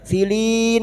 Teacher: bertemunya mad dengan huruf hidup yang dibaca wakaf mad arid li sukun empat harakat kita panjangkan